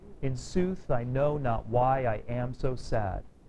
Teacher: Goes up, down, up, down, up, down.